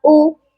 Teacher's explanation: حمزہ پیش او شارٹ میں پڑھیں گے. او اس کو کھینچنا درست نہیں ہے.